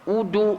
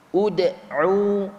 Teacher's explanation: Bunyi qalqalah adalah fathah walaupun sebelumnya baris dhammah ataupun depan.